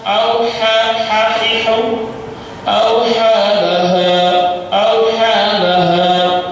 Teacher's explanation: Auha ini tipis, bi anna rabbaka auha hahihu auha laha, ha tipis seperti orang yang lari 10 kilo, sesak nafasnya. Laha bergetar dadanya, ha besar.